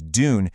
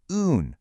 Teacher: instead of forcing that hard D sound, you just gently ease into the oo vowel sound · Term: sliding